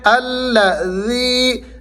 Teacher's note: نرمی سے پڑھتے ہوئے آپ نے ذی کو کھینچنا ہے، یا مدہ ہے